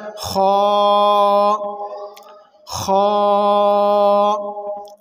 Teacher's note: خا کو حلق کے اوپر والے حصے سے ادا کریں گے